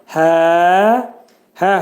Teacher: Hərfi boğazın aşağısından çıxarılır. Bu hərfin məxrəci iki səs qədər uzadılacaq.